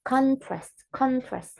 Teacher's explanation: we have to stress the word in the beginning of the sound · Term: nominal stress